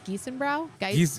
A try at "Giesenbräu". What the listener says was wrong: Giesenbräu. That's like the Czech pronunciation of it. You would think it would be Brau, but it's Bräu, which because their fest beer name is Bräu, like oi, oi, oi.